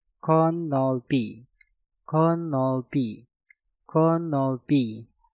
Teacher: Kot diakhiri dengan tiut, setelah itu diikuti kata yang diawali dengan nieun, maka tiutnya kalian rubah menjadi suara nieun. Dan cara pengucapan untuk kata ini menjadi konolpi, konolpi, konolpi.